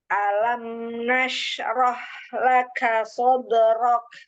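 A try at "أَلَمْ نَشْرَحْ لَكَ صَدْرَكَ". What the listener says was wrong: Coba mau nashrah. Huruf H-nya dialirkan lagi hamas dan rokhawahnya.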